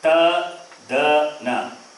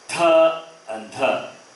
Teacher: Ta, da, na. 1, 3, 5. Alpa prana. Tha and dha. Mahaprana, aspirate.